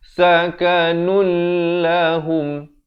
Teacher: Inna salataka sakanun lahum, di sini idgham bila gunnah, daripada sakanun Jadi sakanul